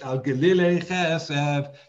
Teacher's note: Most words usually have the stress on the last syllable, so you'd normally expect it to be al glile, but you don't.